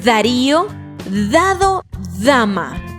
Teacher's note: Para articular el sonido de la letra D, la punta de la lengua se apoya en el filo de los dientes de arriba y dejamos salir el aire. Este sonido también es prolongado, sostenido.